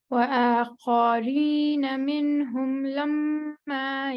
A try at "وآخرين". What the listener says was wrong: وآخرين don't stretch off.